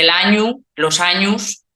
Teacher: la o final muchas veces se pronuncia como u